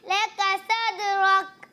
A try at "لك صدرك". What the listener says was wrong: صاد سا نہیں پڑھنا, سا بھی غلط ہو جائے گا.